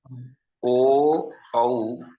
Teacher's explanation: O, Au are Kanthostham, guttural and labial, both.